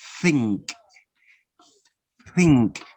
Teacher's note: the first one is voiceless no vibration stick it out you have to stick out your tongue a little bit